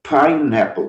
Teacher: Não começa com som consonantal, começa com fonema consonantal, fonema P. Pineapple, sopra um pouquinho esse P antes de vogal aí